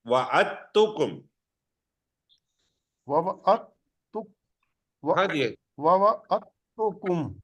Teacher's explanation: جی وَوَعَدتُکُم، نہیں، اب دال اور تے کو چونکہ مخرج ایک ہے تو دال پہ شد ہے اور دال پہ جزم ہے، تے پہ شد ہے۔ اب دال کو نہیں بلایا جائے گا، دال یہاں پہ آواز نہیں دے۔